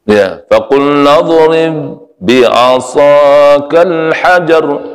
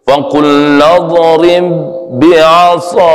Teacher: Ini idgham mutamasilain. Ba mati bertemu dengan huruf ba. Idgham mutamasilain, tidak mantul dia.